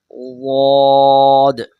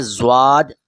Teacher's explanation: کوئی بولتے ہیں زواد، کوئی بولتے ہیں زاد، کوئی بولتے ہیں دود، یعنی کہ اسی کو ہی دال بھی بنا دیتے ہیں، زواد بھی بنا دیتے ہیں. نہیں، اس کا مخرج ہے زبان کی کروٹ اور اس کے مقابل اوپر کے داڑھوں کی جڑ